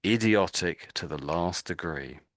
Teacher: my voice went up and I gave a lot of emphasis to that word because I would say that's the whole point of that sentence, the word idiotic